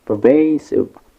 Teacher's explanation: the stress is on the second syllable, vey, pervasive